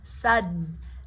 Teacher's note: You're catching the D in the roof of your mouth. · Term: stop